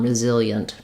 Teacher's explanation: It's again another place where we have two very fast syllables that almost just become one